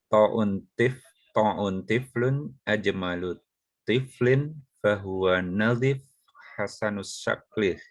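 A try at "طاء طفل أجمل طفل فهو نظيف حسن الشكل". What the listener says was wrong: Masya Allah, barakallah. Itu juga bagus ya. Mensukunkan di akhir ini ya.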